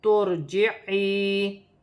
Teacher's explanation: یا ساکن سے پہلے زیر ہے تو یا مدہ بھی بن رہی ہے اور چھوٹی مد بھی ہے